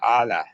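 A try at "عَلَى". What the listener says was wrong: আ টান হবে না, আলা।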